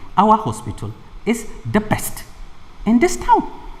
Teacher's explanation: the word that is being stressed is best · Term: emphatic stress